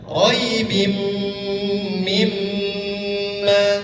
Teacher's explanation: Jadi nun sukun itu benar-benar hilang, terasa seperti hilang Pak. Iya. Tidak terdengar sama sekali. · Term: idgham bi gunnah